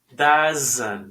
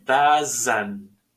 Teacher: Aquí hay un pequeño schwa. Para no decir doesn't con la E, suena como si fuera una pequeña A.